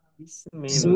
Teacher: বিস চিকুন করে পড়তে হবে, বিশ শাসা শব্দ যেন না হয়